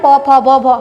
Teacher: ये ओष्ठ व्यंजन है। क्यों, क्योंकि हमारे होठों को टच कर रहे हैं